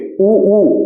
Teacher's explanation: ओष्ठ की बात करेंगे, आप ऊ बोलेंगे, ऊ आपके होठ गोल हो जा रहे होंगे, तो ये ऊ जो है वो ओष्ठ्य है, ठीक है।